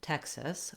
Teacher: looking at the state name Texas, we have first syllable stress. So the tex syllable is long and the sis syllable is short and unstressed. Letter E says vowel eh in Texas, and in Texas, the X says the k and s sounds.